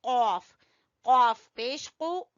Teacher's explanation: कॉफ को जुबान की जड़ से अदा करेंगे